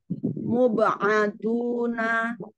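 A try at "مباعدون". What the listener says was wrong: Huruf ba-nya selesaikan dulu, jangan langsung ke ain. Mube. Be'aduna.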